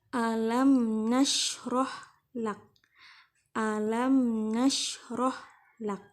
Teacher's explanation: mim mati bertemu dengan huruf na dibaca dengan jelas, izhar syafawi.